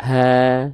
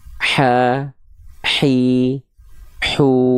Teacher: ha besar pangkal tenggorokan ha kecil naik sedikit ke tengah-tenggorokan